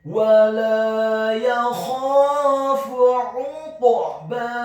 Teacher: Huruf kha-nya dibaca tafkhim tebal dan wajib untuk diserahkan dengan posisi bibir bawah kita agak tertutup, fathah 2 harokat karena setelahnya ada alif.